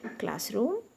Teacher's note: Classroom, it's a noun, the first part of the word is stressed